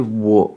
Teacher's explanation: troisième ton qui descend et qui remonte, un petit peu comme s'il y avait une double voyelle, wo, comme s'il y avait deux O, et un W qui se prononce comme un W en français dans wagon, western, etc.